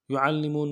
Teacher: عین کو موٹا کرتے لام کو سامنے لائیں گے، لام کے اوپر تشدید زور دیں گے